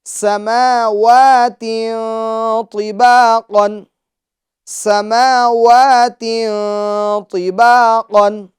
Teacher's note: طا یہ حروف مستعلیہ میں سے، لہٰذا اس کو پور یعنی موٹا پڑھیں گے۔ قاف یہ بھی حروف مستعلیہ میں سے، تو اس کو ہم موٹا یعنی پور پڑھیں گے۔